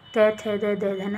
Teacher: दंत से बोला जाता है त वर्ग